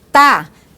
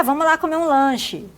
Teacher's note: o R apagado no final dos verbos. Não é comum as pessoas dizerem, por exemplo, tá para estar e comer para comer.